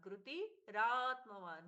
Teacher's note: कृति के बाद में विसर्ग का रे में परिवर्तन